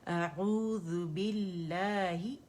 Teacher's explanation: اعو باریکی سے ادا کریں گے، او کر کے موٹا نہیں کریں گے